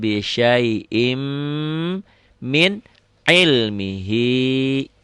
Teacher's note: Bisyai'in ya. Bisyai'in ini masuk ke mim jadi idgham bigunah.